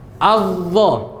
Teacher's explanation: Ujung lidah bertemu dengan ujung gigi seri atas. Dia diapit dia sama gigi seri bawah juga.